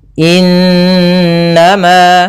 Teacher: Cara membacanya, suara n-nya ditahan 2 harokat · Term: bacaan gunnah